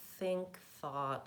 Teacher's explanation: gently between my teeth and then the air has to continue there's also a voiceless th sound it sounds like this that's in words like think thought and with